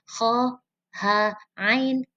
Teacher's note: kho, ha, ain keluar dari tenggorokan